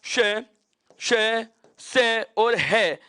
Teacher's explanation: इन चारों वर्णों का उच्चारण करते समय जीभ किसी मुखावयव के पास तो चली जाती है लेकिन स्पर्श नहीं होता। अर्थात प्राणवायु को संघर्ष करके बाहर निकलना पड़ता है, ग्रसन से बाहर निकलना पड़ता है। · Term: ऊष्म